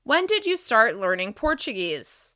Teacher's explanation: The falling intonation signals that I'm done with my question and I need a longer response.